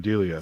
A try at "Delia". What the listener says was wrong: accent's on the wrong syllable.